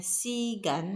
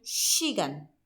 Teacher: bukan si kayak kita biasa si gitu, tapi menjadi s-nya menebal menjadi shi gitu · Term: bunyi sh